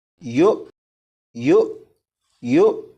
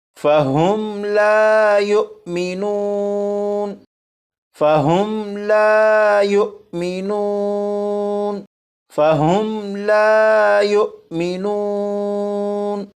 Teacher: حمزہ ساکنہ کو جھٹکا دے کر پڑھیں گے، جیسے یو یو یو۔